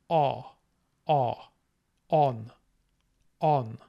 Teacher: it's going to be just like a normal a sound but rounded